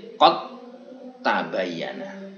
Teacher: Ini Imam Hafiz membaca menjadi qad tabayyana. Seolah-olah tidak ada dal, tapi tak tasdid. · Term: idgham